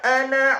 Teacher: ana, tulisannya panjang tapi dibaca pendek